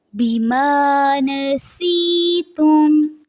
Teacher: سین میں سیٹی کی آواز رہے گی اور یا ساکن سے پہلے زیر ہے، اس لیے اس کو تھوڑا سا لمبا کریں گے.